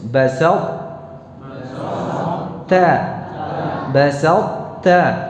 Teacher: Jadi kalau diidghamkan untuk ta yang bertemu dengan ta tetap diucapkan ta-nya, hanya saja tidak berqalqalah, tidak memantul